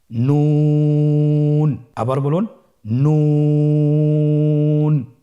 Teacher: নুন হরফটির উচ্চারণ স্থান হচ্ছে জিহ্বার আগা তার বরাবর উপরে তালুর সঙ্গে লাগিয়ে উচ্চারিত হয়।